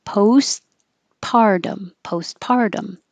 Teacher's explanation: you don't release the first t